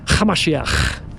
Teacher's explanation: You have to add a little bit of a throaty little ch.